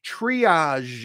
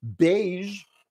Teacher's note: it has that voiced sh sound at the end